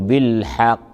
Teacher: القاف في كلمة بالحق مشددة، لو وقفنا عليها تقلقل قلقلة كبرى فنقول بالحق، وفي حال الوصل تكون بالحق مصدقا.